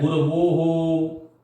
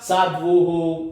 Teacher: जहां उ का उच्चारण स्थान भी औष्ठ है और व का उच्चारण स्थान भी औष्ठ है, इसलिए वो हो बनता है।